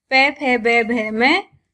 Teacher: इनके उच्चारण में जीवा के सहयोग से दोनों होठ परस्पर मिल जाते हैं, अर्थात इनका उच्चारण करते हैं तो दोनों होठ, ऊपर और नीचे वाला होठ दोनों स्पर्श आपस में मिल जाते हैं, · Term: ओष्ठ